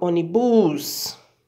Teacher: Onibus, eu não falo assim. A palavra ônibus, eu falo ônibus, a sílaba mais forte é o ó. Então, ela recebe acento por ser proparoxítono.